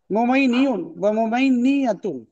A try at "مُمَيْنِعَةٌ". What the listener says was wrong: ممينية جو ہے نا آخر میں تنوین پڑی جاتی ہے اس میں